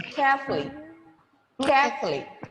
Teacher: the o sound after f is eliminated there is no ooh sound there